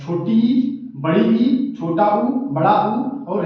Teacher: संवृत का अर्थ होता है मुख द्वार लगभग इसमें बंद होता है